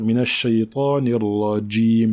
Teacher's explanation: Lorsqu'on prononce le jim dans la langue arabe, il y a comme une petite pression sur la lettre, contrairement au j de la langue française. Donc, il faut dire minash shaytanir rajim.